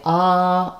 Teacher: shape here the a is an open back vowel because the the mouth is more open and there's space all through the whole mouth even in the back for the air to resonate